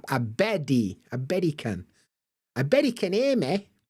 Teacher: almost got like a D sound which is like very American · it's almost like an American tea flap